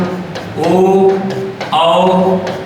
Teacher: ओ औ का जो उच्चारण स्थान होता है वह आपका होता है कंठ ओष्ठ